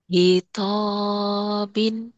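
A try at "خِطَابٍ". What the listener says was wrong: khitabin. Khi itu ya. Khita, khitabin, khitabin.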